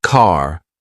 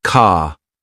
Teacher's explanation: For example, in American English, car sounds like car, while in British English, it's more like ka. It's a soft, almost invisible R sound.